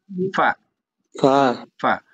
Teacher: নিচের ঠোঁটের প্যাট সামনের উপরের দুই দাঁতের আগার সঙ্গে লাগিয়ে ফা উচ্চারিত হয়